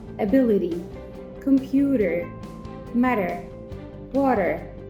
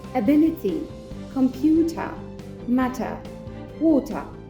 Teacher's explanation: لو عندنا حرف ال T جاي قبليه vowel وبعديه vowel يعني حرف متحرك، في الأمريكان accent بننطق ال T كأنها دي